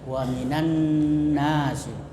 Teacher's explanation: Gunnah itu mendengung, jadi bacanya itu didengungkan nunnya,